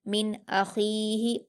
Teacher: नून साकिन के बाद हमजा है जो कि हुरूफ इजहार में से है, इसलिए नून साकिन की आवाज़ को जाहिर करके बगैर गुन्ना के जल्दी पढ़ेंगे। मिन अखीही, हमजा पर हरकत जल्दी पढ़ेंगे, खा पर या मद्दा है 2 हरकत खींचकर पढ़ेंगे, हा पर हरकत से जल्दी पढ़ेंगे।